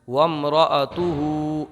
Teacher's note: جب یہ ساکن ہو جائے گا تو یہ ہو جائے گا تاہا پیش تو، وَامْرَأَتُهُ، وَامْرَأَتُهُ۔ اگر ساکن نہیں کریں گے تو ہا کو کھڑی حرکت ایک الف کھینچ لیں گے